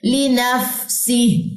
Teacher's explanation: फा हरूफ महमूसा में से, इसमें सांस को जारी करें